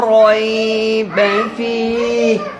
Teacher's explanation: تو را کو موٹا کرنا ہے آپ نے، چونکہ اس پر زبر ہے